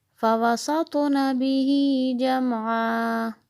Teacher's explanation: تو کو موٹا بھی پڑھنا ہے اور اس پہ قلقلہ ہو اور عین حلق سے